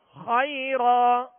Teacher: دو زبر کی تنوین ہے، لہذا وقف کی صورت میں ایک الف سے بدل کر ہم وقف کریں گے اور ایک الف کی مقدار میں کھینچیں گے